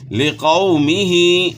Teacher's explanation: وَإِذْ قَالَ، اور جب کہا موسیٰ علیہ السلام نے، لِقَوْمِهِ، واسطے اپنی قوم کے، تو یہاں آپ نے جو ہے نا خیال کرنا ہے کہ واو ساکن سے پہلے زبر ہے، واولین ہے، واولین کو آپ نے نرمی کے ساتھ پڑھنا